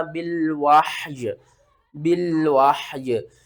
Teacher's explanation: جب ہم یہاں پر وقف کریں گے تو ہا بھی ساکن ہو جائے گا، یا بھی ساکن ہو جائے گا